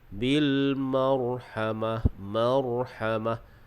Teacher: huruf ro itu dibaca dengan tebal · kita waqaf dengan ta marbutah, jadi waqaf dengan ha